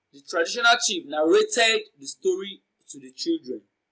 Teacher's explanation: The emphasized word is narrated. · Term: emphatic stress